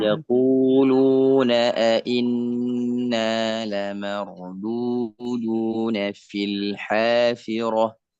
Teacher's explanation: Inna ditahan untuk gunnah musyaddadah